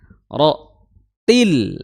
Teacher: Ro makhrajnya adalah di ujung lidah bertemu dengan gusi gigi dari atas ya. Ro til ya. Masuk tasdid pada huruf ta.